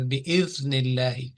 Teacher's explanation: this zal will be recited with the thinness, meaning this is a thin letter